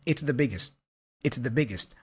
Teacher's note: that t for biggest kind of disappears it's a stop consonant